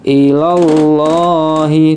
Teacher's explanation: langsung masuk ke lafaz lam jalalah karena depannya fathah maka dibaca tebal atau tafkhim